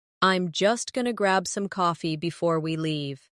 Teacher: Notice how going to became gonna and how I am became I'm. These small adjustments are what makes spoken English flow more smoothly.